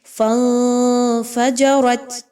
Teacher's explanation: فَانفَجَرَتْ نون ساکن کے بعد فا کا حرف آ گیا، اخفا کیا جائے گا۔ آواز کو ناک میں لے کر جائیں اور غنہ کیجئے، کلیئر نہیں پڑھنا نون کی آواز کو